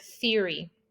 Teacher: the soft TH sound, which is a voiceless dental, as in the word theory.